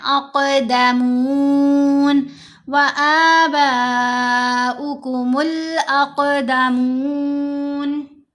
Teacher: क़ाफ के ऊपर कलकला करना है, आवाज़ को हिलाना है, क़ाफ को मोटा भी पढ़ना है।